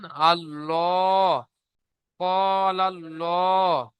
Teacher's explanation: আল্লাহ পুর অর্থাৎ মুখ গোল করে পড়তে হবে।